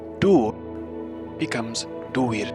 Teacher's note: The vowel U is fronted to the vowel U if it is in the final syllable. If it is a long U, however, then it becomes the diphthong UI.